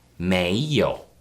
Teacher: That's second tone, followed by the third tone.